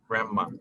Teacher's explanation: Es grandma, sin pronunciar la D. Es como si la D no existiera